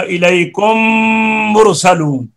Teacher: हाँ, ये आगे शक्ल नंबर आगे चार, मीम साकिन का मीम में जब इदगाम हो, जैसे इलैकुम मुरसलून, यहां भी गुन्ना होगा ना, मीम का मीम में इदगाम हो गया, यहां भी गुन्ना होगा